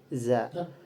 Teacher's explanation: Huruf zai makhrajnya itu asnanilwi yaitu ee dari gigi yang dekat dengan gusi-gusi yang paling atas. Kemudian dari tarikatul khurujnya termasuk ihtiaki, yaitu adanya gesekan dari wad'ul autar atau pita suara itu majhurun.